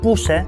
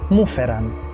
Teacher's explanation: the first vowel of the second word drops